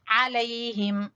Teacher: हिम हा अक्सा हलक से, सब हलक के सबसे नीचे वाले हिस्से से